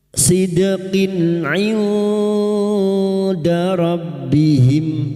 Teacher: Nun sukun bertemu dal ikhfa hakiki. Samarkan nun sukun dan mendengung selama 3 harakat.